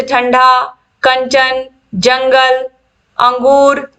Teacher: अनुस्वार के उच्चारण में वायु नाक से निकलती है और उच्चारण झटके के साथ होता है